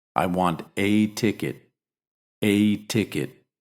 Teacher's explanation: a ticket it's just me remember when it means just one you stress both words the indefinite article and the noun and you give the indefinite article its full pronunciation